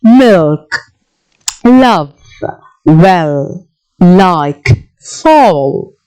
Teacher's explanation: you can see air passes through the two sides of your tongue. So that's the reason it's called lateral.